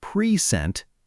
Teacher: When we stress the first syllable, pre-sent, it's a noun. It means a gift, or it can mean now, this moment. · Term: stress on the first part